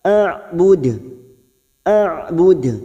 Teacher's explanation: Dan kita waqaf, terdapat huruf dal yang mati di akhir kalimat dan dibaca waqaf, namanya qalqalah kubra. Kita pantulkan dengan kuat